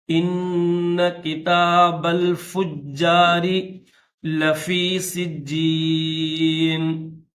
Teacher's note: تشدید والا نون ہے، مشدد نون ہے، تو اس کے اوپر غنہ کریں گے